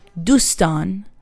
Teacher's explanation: friends in Farsi would be dustan, stress is on stan.